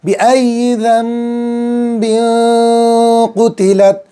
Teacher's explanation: نون ساکن کے بعد با آ گیا ہے تو نون ساکن کی آواز کو میم سے بدلیں گے اور ایک الف کے برابر گنہ کر کے پڑھیں گے۔ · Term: اقلاب